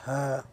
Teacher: কণ্ঠনালী শুরু হইতে উচ্চারিত হয় হা। হা উচ্চারণ করার সময় দেখবেন বাতাস বের হয়। তো আপনার মুখ এক আঙ্গুল পরিমাণ, দেড় আঙ্গুল পরিমাণ ফাঁকা রেখে হা বাতাস বের হবে, বাতাস বের করবেন, তাহলে সঠিক উচ্চারণ হয়ে যাবে।